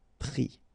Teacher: All right, and then ES now, final S not pronounced, but still you need to write it